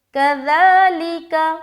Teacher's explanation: ذال کے اوپر کھڑا زبر ہے، ایک الف کھینچ رہے، نرمی کے ساتھ اور بغیر سیٹی کے کھینچنا ہے، سیٹی آواز نہ آئے